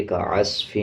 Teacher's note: صاد کے اوپر جزم ہے، عین کو صاد کے ساتھ ملا کے پڑھا جائے گا، صاد کو موٹا پڑھا جائے گا. اسی طرح فا کے نیچے 2 زیر ہیں، میم کے اوپر شد ہے.